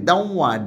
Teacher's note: এখানে ডব্লিউ, অর্থাৎ একটা ওয়াইয়ের মতো সেমি ভাওয়েল, ওয়াইয়ের মতো উচ্চারণ হয় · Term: বশ্রুতি